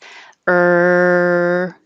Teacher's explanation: this is the er sound that is just the the tongue curled back in the r position and making noise sound in your throat